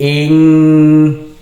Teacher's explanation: disamarkan ke qof sambil dengung atau ditahan dua harakat. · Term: ikhfa